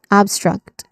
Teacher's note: The pronunciation, it starts with the stressed syllable ab and then struck.